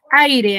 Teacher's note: dos sílabas dos y qué tipo de diptongo sería decreciente decreciente Porque primero tiene una vocal abierta y luego tiene una vocal cerrada